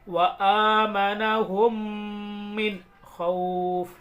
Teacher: نون ساکن کی آواز کو اور تنوین کی آواز کو اظہار کر کے پڑھیں گے، ظاہر کر کے پڑھیں گے، ناک میں چھپا کر نہیں پڑھیں گے، یعنی گنہ نہیں کریں گے۔